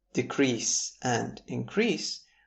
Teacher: if we shift the stress to the second syllable of the words decrease and increase, we would have the verbs